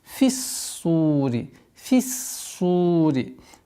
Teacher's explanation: Обратите внимание, ха, твердый знак, твердый звук, и нужно произнести соответственно. С огласовки касра фа уходим на удвоенный сад · Удваиваем, а потом у нас долгота в размере двух огласовок дамма получается